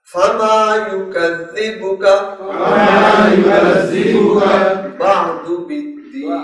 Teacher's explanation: یہاں زال ہے، اس کو زا نہ بننے پائے، سیٹی نہیں آئے گی